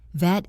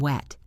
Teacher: Vet teeth on lip. I took my dog to the vet. Wet round lips.